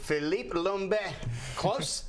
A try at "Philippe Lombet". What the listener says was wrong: Philippe Lombet. Not so strong on the M, and yeah, but it's close, yeah.